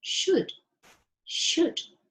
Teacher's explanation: you don't pronounce the l